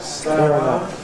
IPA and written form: ˈsteəˈraʊnd (stay around)